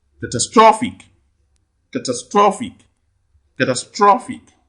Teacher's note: You can see the primary stress falls on straw, straw, straw.